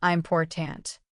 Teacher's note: important stress on the second syllable, important. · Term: Word stress